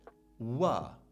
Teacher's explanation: it's voice, so it's buzzing. Labial, which means it's using the lips. Dash, velar, which is also doing something in the sort of mid-back of the mouth. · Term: voiced labial velar consonant